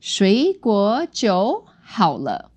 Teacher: So it's 3 second tones and another third tone, because we know that third tones don't like each other.